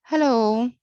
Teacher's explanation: the first part of the word is stressed while the final o is unstressed